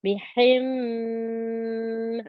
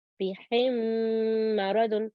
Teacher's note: The first point is idgham shafwi, and what we do, we see two memes together, and what we do, we produce a blending sound, and we give this 2 counts.